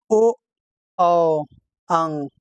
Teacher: कंठोस्थ से, जैसे कंठ और ओठ दोनों का उच्चारण स्थान, इसमें ओ, औ, अंग, ये 3 है, कंठस्थ और ओष्ठ दोनों इसमें प्रयोग होता है।